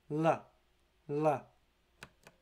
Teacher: l is a voiced alveolar approximant